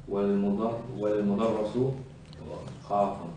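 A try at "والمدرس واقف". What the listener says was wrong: والمدرس. There's an alif after the waw. What does alif do? واقف. واقف.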